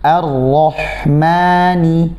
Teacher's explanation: Ma tipis, ya, yang tebal hanya ro. Jangan sampai ma-nya juga terbawa tebal karena huruf ro.